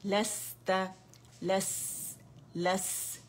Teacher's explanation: लैम फतह सीन सुकून लस, तै फतह तै लस तै लस लस, इसमें क्या है हमारे पास, रखावा भी है, हम्स भी है सीन में, ठीक है, बारीक भी है, तीनों बारीक लेटर्स हैं